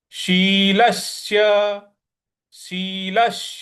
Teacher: ल के बाद स पे आघात देना है